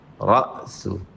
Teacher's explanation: را کو موٹا کریں اور حمزہ پہ جھٹکا دیں